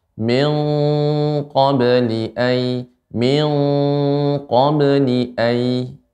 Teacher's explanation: Min, lebih dalam lagi Ibu pengucapan ikhfa pada qaf.